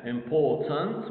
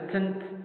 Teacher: Okay, it's not important like that. All right, there's the schwa between the n, nasal n, and the plosive t